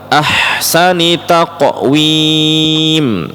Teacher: huruf ha sukun, anginnya tetap dikeluarkan